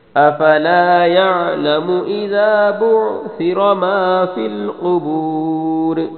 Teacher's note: بعثر سا کو نرمی سے پڑھنا ہے، را کو موٹا پڑھنا ہے